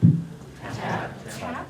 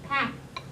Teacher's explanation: you should feel a little puff of air coming out after that T. So that's called aspiration.